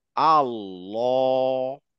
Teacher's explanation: এই আল্লাহ ওয়ার্ডের ভিতরে যখন আমি লামের উচ্চারণ করছি, তখন এই লামের উচ্চারণটা একটু উঁচু হয়ে যাবে। হ্যাঁ, আল্লাহ, জিভটা গোল হয়ে উঠছে, আল্লাহ।